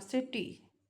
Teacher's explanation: that T becomes a flap R, city. Vowels becomes first stress, city, city.